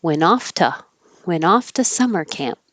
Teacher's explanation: the to is a low probability word. It's hardly ever emphasized. So the vowel can change to just like any syllable within a word.